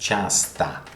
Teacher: For example, in the word часто, which is pronounced часто, because you will see that sometimes O is pronounced like A in Russian